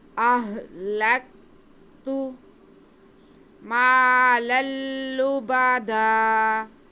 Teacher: ہاں بھی ساکن ہے، کاف بھی ساکن ہے، انہیں جنبش نہیں دینی، ہلانا نہیں ہے، بلکہ آرام سے ادا کرنا ہے۔